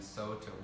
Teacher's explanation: it's using vowel gradation, whereby a U is strengthened into an O